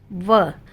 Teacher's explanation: जब भी आप व बोलते हो तो हमारा जो निचला होठ है वह दांतों को स्पर्श करता है। इसलिए इस अक्षर के लिए इन दोनों का प्रयोग बहुत जरूरी है। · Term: दंतोष्ठम